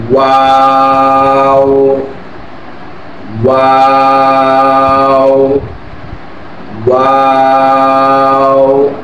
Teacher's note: 2 ঠোঁট গোল করে এই ওয়া এর উচ্চারণ হয়।